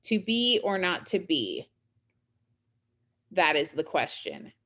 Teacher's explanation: that pause after, you know, to be or not to be, that's the caesura, right? And what that does is it creates emphasis on certain lines, on certain concepts.